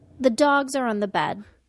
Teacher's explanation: the stressed con content words were dogs and bed nouns content